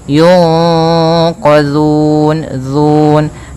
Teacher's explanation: Cara membacanya yaitu suara nunnya disamarkan kepada huruf qaf. Yunqa ditahan, kemudian langkah selanjutnya ditahan gunnahnya. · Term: ikhfa